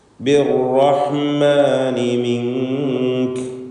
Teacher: ശബ്ദ നൽകപ്പെടുമ്പോൾ റാഹിൻ്റെ തക്രീറിനെ നീ ഇഖ്ഫാ ചെയ്യണം, ഗോപ്യമാക്കണം. അപ്പോൾ ബിർറഹ്മാനി അവിടെ ആവർത്തിച്ച് ബിർ എന്ന് വിറപ്പിച്ചുകൊണ്ട് കുറേ റാഹ് ഉച്ചരിക്കരുത് എന്നാണ് സൂചിപ്പിച്ചത്.